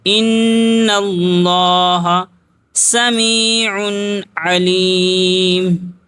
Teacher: نون میں گنہ کریں گے، تشدید ہے